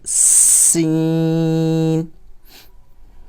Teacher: تھوڑی سی اس میں سی T کی آواز آنی چاہیے